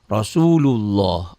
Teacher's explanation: Allah kan tebal, Allah bunyi O.